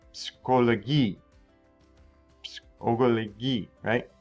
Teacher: P followed by S. There's no silent P in German. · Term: PS sound